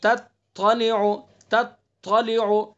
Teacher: اگر ہم نے پڑھا تتلی تو دونوں تا بن جائیں گے، لہن جلی غلطی ہو جائے گی